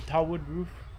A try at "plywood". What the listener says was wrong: plywood roof. Plywood, not tawwood. Plywood. P.